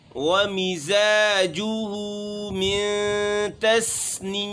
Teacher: آخر میں میم ساکن ہے تو ہم نے آواز کو ناک میں لے کے جانا ہے